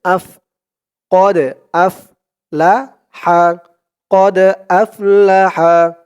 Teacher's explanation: দালটা হচ্ছে কল কলার হরফ ধাক্কা দিয়ে পড়তে হবে